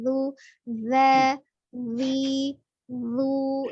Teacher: Zal itu secara makhraj dia ada ujung lidahnya ada di ujung gigi seri bagian atas. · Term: huruf dzal